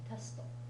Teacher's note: It's almost impossible for Japanese people to end a syllable with a T sound, so the O is usually there a little bit, but it's not emphasized.